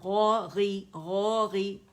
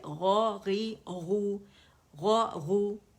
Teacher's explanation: غو غو غو موٹے ہیں دونوں, غی موٹائی میں کمی آ جائے گی